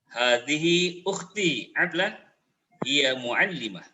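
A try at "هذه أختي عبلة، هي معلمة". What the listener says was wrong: Mumtaz ya.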